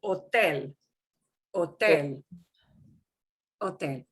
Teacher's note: They spell it with an H, but we do not pronounce that H.